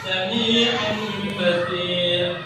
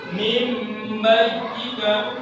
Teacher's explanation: nun sukun bertemu dengan huruf ba. Di sini nanti akan ditandai dengan huruf mim, harus dibaca iqlab.